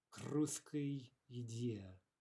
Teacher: no pause, no vowel, nothing whatsoever coming in between the k and the r